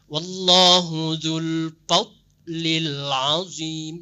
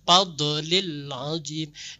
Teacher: huruf dot yang mati, dia tidak boleh berbenturan. Dia jangan dibaca seperti qalqalah. Misalnya wallahu dzul fadlil azim, jangan dibaca fadlil azim.